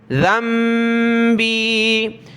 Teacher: یہاں یہ دیکھیں چھوٹی میم ہے تو ذال کو چھوٹی میم کے ساتھ ملا کر پڑھیں گے کیونکہ نون ساکن ہے، نون ساکن کے بعد با ہے